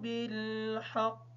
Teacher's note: حا کو ادا کرتے وقت خیال رکھیں گے ہا کی آواز ادا نہ ہو۔